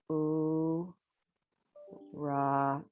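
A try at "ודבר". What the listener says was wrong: No, it's not. Remember Dalet and Rash. There's a Dalet.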